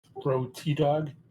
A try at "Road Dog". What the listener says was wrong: The T silent.